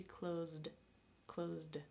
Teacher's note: Or close --- Z, Z: this is a voiced sound, so it would be clozD